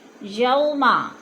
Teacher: یوما، یو پہ وولین ہے، وولین کو لمبا بھی نہیں کرنا اور جھٹکا بھی نہیں دینا